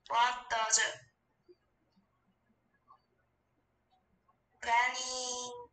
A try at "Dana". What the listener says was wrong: 뭐 다 데니래, 다 데니래, 다 데니래. 이게 데니로 보이냐? Dana. Dana.